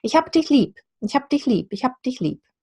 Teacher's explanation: But the B in lieb becomes a P.